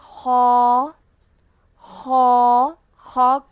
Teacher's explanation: ہا ہا اگلا حرف ہے خو خو خو کو ہم پر پڑھیں گے، مستعلیہ حرف میں سے ہے یہ خو، تو ہم اس کو پر پڑھیں گے، منہ بھر کے پڑھیں گے۔ خو حلق کے اوپر والے حصے سے ادا ہوگا